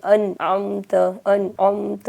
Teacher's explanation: ہمیں نون کو صاف پڑھنا ہے، ظاہر کر کے پڑھنا ہے، چھپانا نہیں ہے، ملانا نہیں ہے، بدلنا نہیں ہے، بلکہ صاف پڑھنا ہے۔ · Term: اظہار